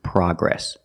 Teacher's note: The American pronunciation is progress, with the short ah sound, like hot and stop.